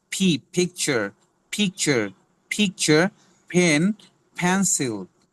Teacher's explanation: দুই ঠোঁট হালকা করে বাতাস ছেড়ে বলতে হবে ফ এর মতো করে P, picture, picture, picture, pen, pencil.